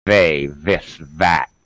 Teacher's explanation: My tongue is out, touching my top teeth.